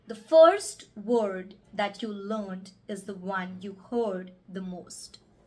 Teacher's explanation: notice how all the RS are properly articulated and rolled